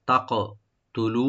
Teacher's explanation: তা ওপেন থাকবে, কাফটাকে আমরা রাইট দিয়ে একটু কলকলা করব